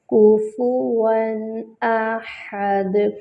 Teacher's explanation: حمزہ جو ہے وہ اقصی الحلق سے ادا ہوگی، ہا وسط الحلق سے ادا ہوگی، اور دال پر قلقلہ کریں گے۔ · نون تک کا اظہار کر کے پڑھیں گے، غنہ نہیں کریں گے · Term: اظہار حلقی